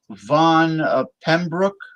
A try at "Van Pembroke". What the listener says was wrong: That's very close. It's Van Pembroke. Von is my screen name. Spelled quite differently than it sounds.